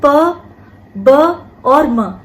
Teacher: जब हम अल्प प्राण की बात कर रहे हैं तो अल्प प्राण व्यंजनों में जो निश्वास है, जो वायु है, जो बाहर निकल रही है जो वायु, उसमें प्राण तत्व कम होता है, उसका वेग कम होता है, इसीलिए हमने अल्प प्राण व्यंजन कहा।